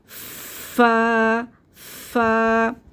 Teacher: اچھا، یہ بہت سے لوگ پڑھتے ہیں اس کو فا نہیں، فا بالکل مخرج سے ادا کرنا ہے. یہ تھوڑی سی اس میں ہمس ہوگا، یعنی کہ تھوڑی سی ہوا کی آواز آئے گی